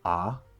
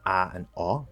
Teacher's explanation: the cot merger right i just say ah but people who don't have the merger say ah and all